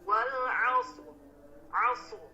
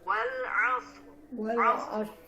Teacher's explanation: Huruf shad dibaca tebal dan juga huruf ra juga dibaca tebal. Wal 'asr. Tidak boleh tipis atau dan huruf shadnya tertukar dengan huruf sin.